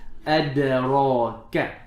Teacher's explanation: Kaf is flat with hams.